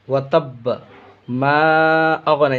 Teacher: مد منفصل ہے، اس کو بھی کھینچنا ہے 2.5 الف کے برابر